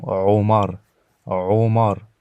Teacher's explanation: c'est un son qui vient vraiment du fond de la gorge au niveau de la pomme d'Adam